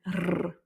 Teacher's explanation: La deuxième façon, c'est la façon roulée. Donc là, on n'est plus dans la gorge, on est dans le roulage du R avec la langue. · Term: R roulé